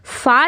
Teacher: ऊपर वाले दांत आपके नीचे वाले होंठ में लग रहे हैं और नीचे वाले होंठ के अंदर साइड लग रहे हैं। यानी मुंह बंद करते हैं तो होंठ जो हमारा अंदर होता है उस जगह आपके जो दांत है वो टच करेंगे।